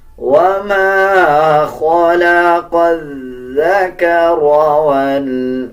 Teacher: اکثر لوگ اس کو زا پڑھ دیتے ہیں، بلکہ زا اور ذال ڈیفرنٹ الفاظ ہیں، ان کو اپنے مخرج سے ادا کیا جائے گا۔ جب آپ ذال پڑھیں گے تو ذال نرم حروف میں سے آتا ہے، زبان کی نوک دونوں دانتوں کے درمیان لے کے آئیں گے، تب ذال صحیح ادا کیا جائے گا۔